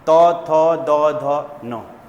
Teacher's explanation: जीभ दांत में टच कर रही है